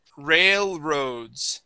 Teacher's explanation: your tongue is going to come up with the L and then come right back down